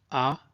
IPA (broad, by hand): a: